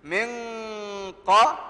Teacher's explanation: qaf, huruf tebal. Dengung dia pun tebal, ikut dia. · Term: ikhfa, haqiqi